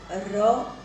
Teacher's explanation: એની સાથે મેં કીધું એમ થડકારવાળો, જેમ કે અળ, આપણી જીભ પછડાય છે, ર આપણી જીભ ધ્રુજે છે નાદતંત્રી કરતાં વધારે